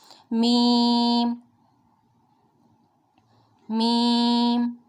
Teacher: ہمارے جب ہونٹوں کے جو خشک حصے ملیں گے آپس میں تو میم ادا ہوگا، میم میم۔ نون ویورس، جب زبان کا کنارہ اور دانتوں کی جڑ کے اوپر تالوں کی جانب والے حصے سے ملے گا تو نون ادا ہوگا.